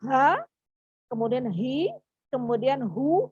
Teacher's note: Jadi H dari tenggorokan yang paling dalam. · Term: huruf H